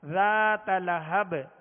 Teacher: با کو ساکن کر دیا لہذا یہاں قلقلہ ہوگا